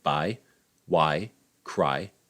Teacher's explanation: it represents the diphthong, that's the glide of 2 vowels in one syllable, I, the low front unrounded vowel a, to the near-high near-front unrounded vowel I, such as in buy, why, cry, etc.